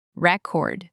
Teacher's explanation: Take the stress block and move it to the end.